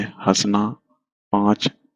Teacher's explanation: इनका उच्चारण मुख और नासिक दोनों से मिलकर निकलता है। जैसे हंसना, पांच, तो ये मुख और नासिक दोनों से मिलकर निकलता है। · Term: अनुनासिक